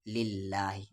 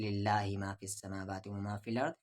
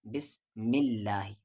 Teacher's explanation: اللہ کے لام سے پہلے زیر ہے، اسے ہم لائٹ پڑھیں گے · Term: پتلی آواز